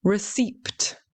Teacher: the common mispronunciation is pronouncing the P. Okay, people try to pronounce it as receipt.